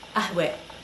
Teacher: the ta marbuta at the end of the word makes a slight change from a, which you're probably used to e. So not qahwa, ahwe.